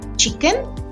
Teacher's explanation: When a nuclear rise begins, the author explains that there's often a step down in pitch. That means right before your pitch rises, your voice suddenly drops a little at the start of the nuclear syllable